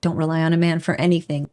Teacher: But we don't release the air through the mouth. The n and the g here are merged together and make one sound. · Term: nasal sound NG